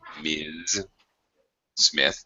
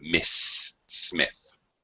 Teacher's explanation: the first one is a Z sound, Ms. It's a voice sound, so you keep your voice going